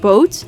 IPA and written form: bo:t (Boot)